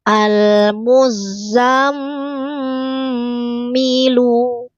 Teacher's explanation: Tetapi kalau yang di mim bertasdid tahan dengung.